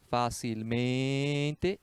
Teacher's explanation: facilmente, eles consideram duas sílabas tônicas, fa e men. Porque você lê facilmente, você percebe que carrega o peso no men, né?